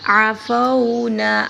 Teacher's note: عین حلق سے ادا کیا جائے گا، نون کو لمبا کریں گے